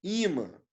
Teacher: A sílaba tônica não é nasal